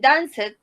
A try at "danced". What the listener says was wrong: No, it's a letter T. Danced.